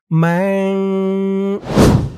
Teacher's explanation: ম্যাং গুন্নাটা নাকের ভিতরে লুকিয়ে করতে হবে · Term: ইকফা গুন্নাহ